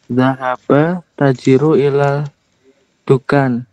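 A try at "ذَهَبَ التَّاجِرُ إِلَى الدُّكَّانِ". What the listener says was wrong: Panjang bacanya bisa diperjelas lagi. Zahabat tajiru ila dukani. Di sini ada at-tajiru. At-tajiru. Ada alif lamnya ya di sini. Ada alif lamnya. Ketika apa namanya? Sebelum alif lam itu ada kata lain, misalnya di sini zahaba. Kan ketemu alif lam tuh. Secara asal bacanya zahaba at-tajiru.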